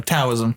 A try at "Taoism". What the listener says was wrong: No, it's with a D. You pronounce it with a D. Yeah, it's spelled T.